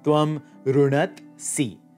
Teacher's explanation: The dha has lost its voicing and aspiration, just becomes the ta